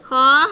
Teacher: ہمارے حلق کا وہ حصہ جو اوپر منہ کی جانب ہے وہاں سے ادا ہوتا ہے۔ کوشش کرنی ہے کہ ہمیں اس میں اپنے ہونٹوں کو گول نہیں ہونے دینا۔